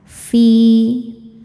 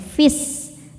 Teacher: Fi. Berhenti panjang, kalau diteruskan jadi gugur pemanjangnya, fi-nya pendek.